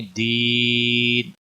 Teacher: یہاں وقف کی صورت میں جب نون ساکن ہو جائے گا تو یہاں پر مد العارض وقفی ہوگی